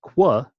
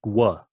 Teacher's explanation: So in other words, this first one is pronounced qu, kind of like an English QU, and the second one is pronounced gw. So at the end, you have your lips go into a bit of a circle to pronounce it. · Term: labiovelars